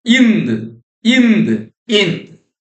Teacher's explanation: When we make a tight contact between the front tongue and the front roof of the mouth and sound the air escapes through the nose producing the nasal phone in. · Ind is produced by tightly keeping the front tongue and the front roof of the mouth and sounding. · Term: nasal phoneme